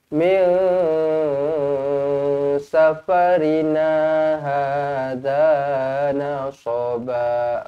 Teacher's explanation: Nun kosong bertemu dengan sin ikhfa hakiki, dengungkan dua harakat.